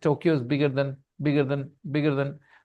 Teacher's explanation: in British English R is not pronounced okay so that's why it is pronounced bigger